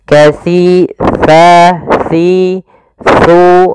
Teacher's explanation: Hati-hati dalam melafalkan huruf si, karena di sini jangan dibaca kasiro. Sering terjadi kesalahan yaitu membacanya dengan kasiro, dengan sin. Padahal di sini adalah huruf sa. Untuk menyempurnakan makhraj daripada huruf sa, kita harus mengetahui posisinya dulu, tempat keluar hurufnya, yaitu ada di mana ujung lidah kita menempel dengan gigi sari atas.